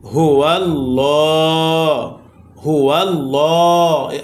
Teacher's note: আল্লাহ সাথে লামকে পুর করে পড়েছি। অর্থাৎ মোটা করে পড়েছি। কেন? কারণ আল্লাহ শব্দ লামের পূর্বে জবর আসছে।